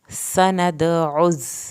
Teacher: سین کو سیٹی کی آواز کے ساتھ پڑھ کے، عین کو حلق سے پڑھنا ہے